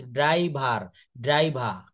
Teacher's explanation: এখানে কিন্তু আর বলা হয় না